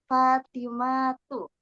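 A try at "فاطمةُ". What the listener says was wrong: Jangan dipanjangkan mahnya.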